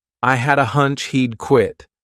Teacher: I had a, so I combine hadda together as one word.